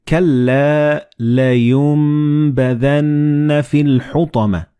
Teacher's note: So the noon and ba, they will be assimilated together and you will pronounce them as meme.